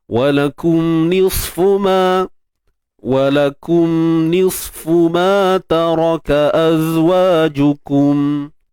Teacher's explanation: Nisfu huruf sad tebal, angkat pangkal lidah.